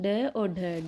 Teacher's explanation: ड और ढ का उच्चारण मूर्धा से हो रहा है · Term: मूर्धन्य व्यंजन